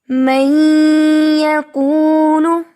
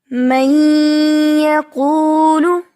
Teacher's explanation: اس میں بھی کیا ہے؟ نون کی آواز ناک میں غنہ کے ساتھ ٹھہر رہی ہے